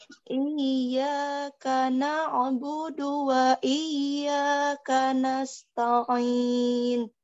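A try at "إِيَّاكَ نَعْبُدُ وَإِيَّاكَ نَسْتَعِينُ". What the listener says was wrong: Ya, nasta bukan nasta'in. Nasta. Ta tipis jangan sampai jadi tebal. Ta'in. Nasta bukan to tapi ta. Nasta'in. Nasta taknya dibaca tipis.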